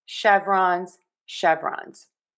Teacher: end in that Z sound. We typically say a Z sound when we have the plural and the root word ends with an N sound.